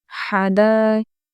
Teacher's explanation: हा की आवाज़ अच्छे से निकालेंगे, दाल को खींचते हुए हम पढ़ेंगे